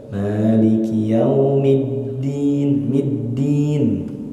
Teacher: Huruf dal bukan da, tapi da. Jangan ada udara yang keluar dari huruf dal.